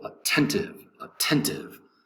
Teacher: Attentive has 3 syllables. The accent is over the second syllable.